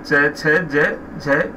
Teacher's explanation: इनका उच्चारण तालु से होता है। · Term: तालव्य व्यंजन